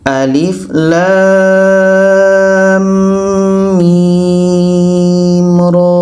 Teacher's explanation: Lam 6 harakat, setelah itu dengung 2 harakat kerana idgham. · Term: idgham mislan